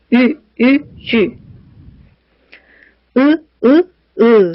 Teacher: 쥐 이렇게 발음할 때는 입술 모양과 혀의 위치가 정지된 상태에서도 발음할 수 있습니다.